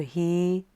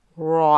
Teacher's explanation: So I've added a capital here to show you this is a heavy letter, ra. So the first one is light, but now the second one, because it's a fatha, is heavy.